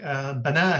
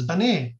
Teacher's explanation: imala is an inclination of the sound towards an E sound, basically